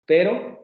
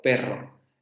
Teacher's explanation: las secuencias de fonemas son prácticamente las mismas a excepción de la vibrante que en el primer caso es simple y en el segundo caso es múltiple · Aquí lo estamos viendo en términos de consonantes. La vibrante simple en pero y la vibrante múltiple en perro.